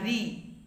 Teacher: রি উচ্চারিত হচ্ছে জিহ্বাগ্র এবং মূর্ধার মধ্যে, তাই রিকে বলা হচ্ছে মূর্ধন্য স্বর